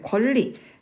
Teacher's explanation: 뒤에 나오는 리을 때문에 앞에 나오는 니은이 리을로 바뀌었기 때문에